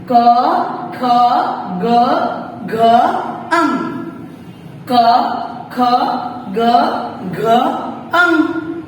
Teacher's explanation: क वर्ग यानी कि कंठव्य, हमारी कंठ से बोले जाते हैं ये वर्ण